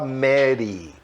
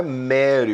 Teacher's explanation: você tem que enrolar a língua para trás, o R em inglês é aquele chamado R retroflexo